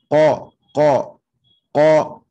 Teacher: Donc, le fond de la gorge, c'est vraiment la partie la plus au fond de la langue maintenant. C'est le qaf.